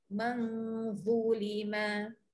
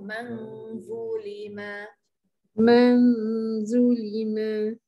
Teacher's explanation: Okay, baris kedua daripada bawah sebelah kiri sekali. Daripada man jadi mang. Dengung dan keluarkan lidah.